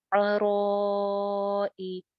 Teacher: क्योंकि रॉ मोटी है इसलिए अलिफ भी मोटा होगा , और अलिफ के ऊपर मद है जो कि हमजा की